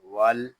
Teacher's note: اور وقف بالاسکان واو لام زبر ول، یہاں الف کو نہیں پڑھیں گے، واو کو لام کے ساتھ ملا دیں گے